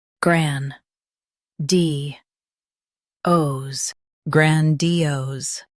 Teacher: Say gran-di-ose with a strong gran and clear ose.